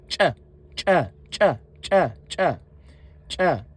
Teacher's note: the ch has an explosive sound, meaning it is a quicker and sharper phonation.